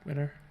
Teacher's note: some varieties of English at least have a nasalized flap in winter. Of course, the nasalization shows up on the vowels, mostly, or on the preceding vowel.